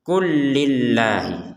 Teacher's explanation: Enggak ada enggak ada jeda sama sekali jadi langsung saja killahi · Lam sukun ini ya bertemu dengan lam, maka lam yang pertama dimasukkan kepada lam yang kedua sehingga langsung saja dibacanya kullillah. Jadi jangan sampai dibaca terpisah menjadi kullillah.